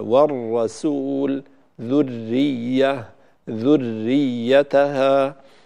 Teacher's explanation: ينبغي أن نرفع اللسان ارتفاعة واحدة فيرتعد ارتعادة واحدة بهذه الارتفاعة ويخرج فيه راء واحدة · الراء المشددة ليس فيها تكرار كما بيناه، فلا يصح أن أقول والرسول، أو سيأتي معنا بعد قليل ذرية ذريتها، كل هذا التكرار غير صحيح.